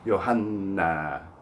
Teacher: we're talking about a doubled consonant, the N, in Yohanna. And you have to hang on it for 2 beats.